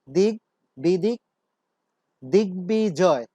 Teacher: এই শব্দটিতে গয়ের নিচে যে ব যুক্ত হয়েছে সেখানে আমরা দেখতে পেলাম বয়ের উচ্চারণ পরিপূর্ণভাবেই হচ্ছে, তার উচ্চারণ লোপ পায়নি বা আগের কোনো ধ্বনি দ্বিত্বও হয়নি। দিক বিদিক, দিগ্বিজয়, এখানে দিগ্বিজয় নয়, দিগ বিজয়।